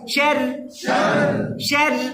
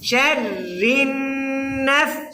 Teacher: দিকে তাকান, মুলকুস সামাওয়াতি, ওকে। তারপরে একটা শিনের উচ্চারণ, রা মুশাদ্দাদ, রায়ের উপর তাসদিদ, তাসদিদের নিচে জের হলে রা পাতলা হয়